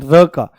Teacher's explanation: जैसे ही र बोलते हैं तो जीभ का जो अगला हिस्सा है, टिप जो है, वो ऊपर वाले मसूड़े में जाकर के लुढ़कती हुई टक से लगती है और फिर नीचे आ जाती है। · जब हम र का उच्चारण करते हैं, र का, तो हमारी जीभ जो है वो लुढ़क करके जाती है। आप महसूस करना बिल्कुल। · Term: लुंठित व्यंजन